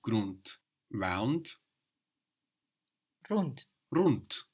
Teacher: and that D pronounced like a t